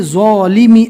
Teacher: زو کو پڑھنے میں ہلکی سی زا جیسی آواز آتی ہے